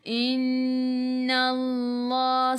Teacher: Inna Allah, nun ada sabdu, tengok. Tekan ke dalam nun dan dengung 2 harakat. Wajibul gunnah, wajib dengung.